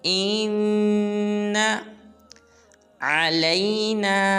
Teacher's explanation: جب حمزہ کو نون مشدد کے ساتھ ملائیں گے تو غنہ بھی کریں گے اور نون کو ہرگز لمبا نہیں کریں گے